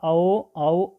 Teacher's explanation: ओष्ठ plus कंठ जो होगा, ओष्ठ और कंठ से जो निकलेगा, ठीक है, ओष्ठ और कंठ से जो निकलेगा वो होगा औ